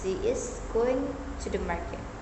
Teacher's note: to and the are typically unstressed, while going and market receive the stress.